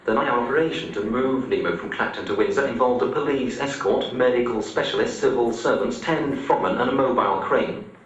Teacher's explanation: Okay, the other one, which is artificially stress timed, is where I have adjusted it so that every foot, that is from the stressed syllable through the following unstressed syllables until the beginning of the next stressed syllable, are all exactly equal in duration. Again, you will hear that it sounds completely unnatural, and also you will find it difficult to believe that all of these feet are of equal duration.